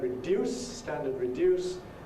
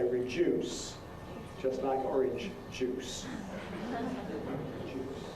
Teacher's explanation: if you’ve got the word ‘reduce’, standard [rɪˈdjuːs]; Londoners say [rɪˈʤuːs], just like ‘orange juice’ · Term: Yod coalescence